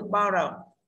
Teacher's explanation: như vậy chúng ta có chữ bo nhận trọng âm đấy nha